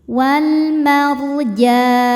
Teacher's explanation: Maka jimnya panjang boleh dua, boleh empat atau enam harakat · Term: mad arid lisukun